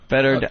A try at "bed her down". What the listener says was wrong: No one says better down. No, better down.